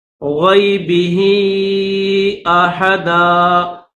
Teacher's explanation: یہ ہا کے نیچے کھڑی زیر بھی ہے اور اوپر مد بھی ہے, تو اس کو 3 الف کی لمٹ میں کھینچیں گے, یعنی تھوڑا سا کھینچیں گے.